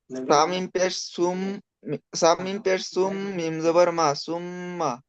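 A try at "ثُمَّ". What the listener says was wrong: মিমটা গুন্না হবে না হবে না? একালি পরিমাণ গুন্না করেন। অবশ্যই গুন্না করতে হবে, থা মিম পে তুম।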